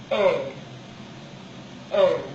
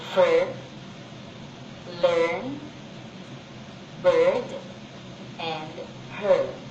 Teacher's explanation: This is a tense position of the tongue. There is a curling and rising of the tongue.